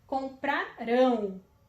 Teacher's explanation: O acento está na última sílaba, né? Tempo no futuro, última sílaba, classifica-se como oxítonas, né?